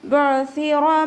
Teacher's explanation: റ ഉയർത്തിയിട്ട് ഉച്ചരിക്കുക, ഫത്തഹ് വന്നതുകൊണ്ട്. · മീമിൻ്റെ കൂടെ അലിഫ് മദ് വന്നു, അപ്പോൾ 2 കൗണ്ട് നീട്ടിക്കൊടുക്കുക